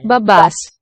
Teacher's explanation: Okay, so the sound is a b, voice stop.